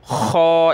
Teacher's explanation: خا بھی موٹے حروف میں سے گلے سے نکلتا ہے